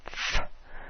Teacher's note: it's the top of your teeth connecting with the bottom lip to make that sound. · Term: labiodental